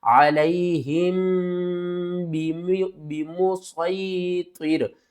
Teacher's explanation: میم ساکن کے بعد اگر با آ جائے تو میم ساکن کے اوپر ہم غنہ کریں گے